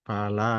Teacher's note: La dibaca 2 harokat, mat disebut mat tabi'i. Alif didahului fathah.